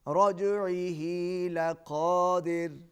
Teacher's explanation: را باریک ہوگی اس لیے کہ ما قبل مکسور ہے، اس سے پہلے دال کے نیچے زیر ہے، کسرہ ہے، اس لیے یہاں پر را کو باریک پڑھیں گے.